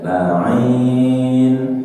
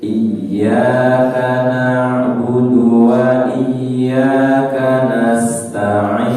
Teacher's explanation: Dinaikkan pada akhir ayat.